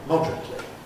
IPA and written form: ˈmɒdrətli (moderately)